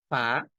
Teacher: উপরের পাটির সামনের যে দুইটা দাঁত আছে সেই দুই দাঁতের ধারালো অংশটা নিচের ঠোঁটের পেটে লাগবে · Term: আরবি বর্ণ ফা